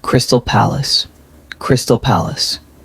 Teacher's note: The second syllables are soft and quick. First syllables carry the stress.